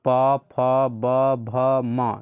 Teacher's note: ये सभी का उच्चारण स्थान कहाँ होता है, तो ये होता है ओष्ठ की मदद से